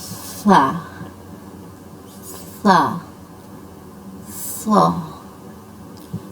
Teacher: Back side से हमें अपनी ज़ुबान की बैक साइड को टॉप रूफ की तरफ लेके जाना है, और फिर ज़ुबान और दांतों की पोजीशन बिल्कुल वही होगी। बस यहाँ पर दांत सख्ती से मिले होंगे, उनके दरमियान स्पेस बिल्कुल नहीं होगी, जिससे इसमें सीटी की आवाज़ भी थोड़ी सी कम होगी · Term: मोटे हरूफ